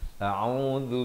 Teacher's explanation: Sebelum kita mulakan bacaan, pastikan lafaz hamzahnya itu di pangkal kerongkong A dan ain di pertengahan kerongkong dengan baris dhammah 2 harakat dan zal di hujung lidah